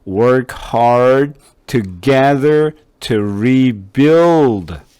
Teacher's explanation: D하고 T 발음이 소리가 거의 비슷하기 때문에 하나 없어지는 게 맞아요.